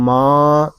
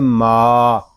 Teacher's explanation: میم کی آواز ناک میں نہیں جانی چاہیے، اس کو ماں اس طرح نہیں پڑھیں گے، اس کو پڑھیں گے ما۔